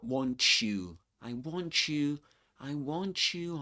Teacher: want you, gives you this sound, this kind of ch sound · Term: coalescent assimilation